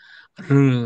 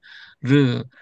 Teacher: 그 다음에 혀가 이게 말려가는 소리, 이 혀가 말리는 소리는 르 하면 혀가 둘둘 이렇게 굴러가잖아요